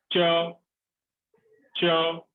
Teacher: जिह्वा तालू पर स्पर्श कर रही है।